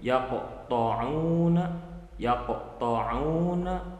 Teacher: cara pelafalannya itu dimantulkan atau dipantulkan, akan tetapi pantulnya itu normal. Pantulannya itu normal, tidak dibuat-buat menjadi berlebihan. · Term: qalqalah sugro